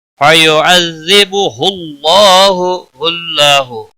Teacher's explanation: اللہ کے لام کو موٹا پڑھیں گے کیونکہ پچھلے حرف کے اوپر پیش ہے، اس کے اوپر کھڑی زبر بھی ہے، ایک الف کے برابر کھینچ کر پڑھیں گے.